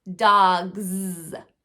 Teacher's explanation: So because I had my voice box on for G, I keep it on for Z, dogs. This is not representing the S sound. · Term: Z sound